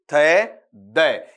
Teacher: आपका जीभ है ऊपर वाले दांतों को हल्का सा क्या करेगी, स्पर्श करेगी, थे द। ये किस में आ जाएगा आपका, वहां पर डेंटल साउंड में आ जाएगा।